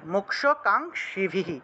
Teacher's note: মোক্ষ আর কাঙ্ক্ষিভি ক্ষীয় থাকায় মূর্ধন্যস্য উচ্চারণ আসছে